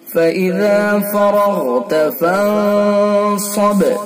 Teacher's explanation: ذال کو نرمی سے پڑھیں گے اور را کو پر کریں گے غین کو پر کریں گے